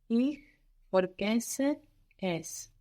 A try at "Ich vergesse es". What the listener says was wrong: And that's vergessen, not vorgessen. Vergessen. Ich vergesse es.